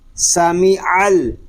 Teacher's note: اس کو عین نہیں پڑھیں گے، ناک میں آواز نہیں جانی چاہیے